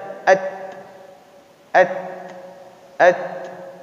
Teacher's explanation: Huruf ta dia tidak keluar desis.